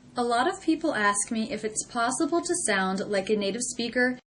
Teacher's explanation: In the entire sentence, I don't hear any gaps or pauses between words